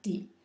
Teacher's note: it's pronounced in the fourth tone